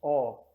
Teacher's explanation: Do outro lado, partindo do A, nós temos o O. Percebam, quando nós falamos O, nós fechamos mais a boca em relação ao A. Só que ao invés de produzir um som anterior, nós fazemos um som posterior.